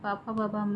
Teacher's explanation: दोनों ओष्ठों के स्पर्श से बोले जाने वर्ण ओष्ठ कहलाते हैं।